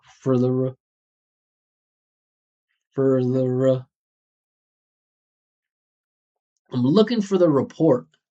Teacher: Three unstressed syllables in a row.